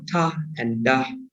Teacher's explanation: lưỡi chạm lên cái phần lợi ở trên ngạc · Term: Alveolar Ridge